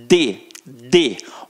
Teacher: observa que a minha língua, ela encosta no dente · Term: língua dental